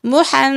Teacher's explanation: میم مشدد ہے لہٰذا غنہ کریں